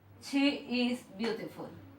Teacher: como esta E se haría o se cambiaría por una I como un poco más alargada. Ejemplo, para decirlo acá, que es escrito, está como tal, che is beautiful, pero su pronunciación se pone como una I un poco alargada, como dije anteriormente, y es she is beautiful.